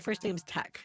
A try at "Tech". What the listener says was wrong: It's not Tex. It's Tech. T-E-C-H. Tech.